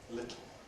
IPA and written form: ˈlɪtl̩ (little)